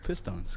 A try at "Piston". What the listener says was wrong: Yeah, no, but it sounds like you're saying Piss Stone.